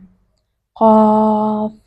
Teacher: قاف زبان کے پچھلے حصے سے تالو کے ساتھ دباؤ ڈال کر ادا کریں